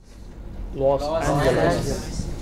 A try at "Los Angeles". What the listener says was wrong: Yeah.